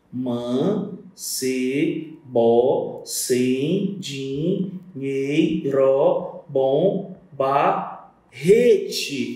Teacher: A sílaba tônica é o re, tá? A pós-tônica eu não considero.